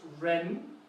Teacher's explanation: there's a rising accent on this tone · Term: rising tone